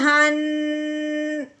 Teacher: ہلکا سا منہ کھولنا ہے اور آواز ناک میں سے نکالنی ہے